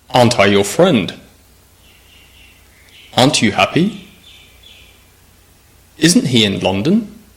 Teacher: practice that Rising intonation at the end of the question